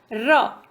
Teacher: र हल्का सा हमने तलवा टच किया, ठीक है, ऊपर का हिस्सा हल्का सा टच हुआ लेकिन पूरा नहीं। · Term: अंतस्थ व्यंजन